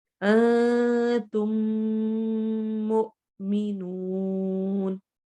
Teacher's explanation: دو میم اکٹھے ہو گئے تو وہاں پہ ادغام ہوگا اور غنہ والا ہوگا۔ ٹھیک ہے، ایسے ہی قلوبہم مرض، میم ساکن قلوبہم کا لاسٹ اور آگے میم کا مرض کا میم، اور اس کا طریقہ کیا ہے، کیسے کرنا ہے، پہلی میم کو دوسری میم کے ساتھ ملا کر ایک الف کے برابر غنہ کرنا ہے۔ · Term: ادغام مثلین صغیر